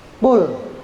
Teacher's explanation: Makharijul hurufnya, makhrajnya itu dia di tenggorokan. Qul, di lak-lakan. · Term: qaf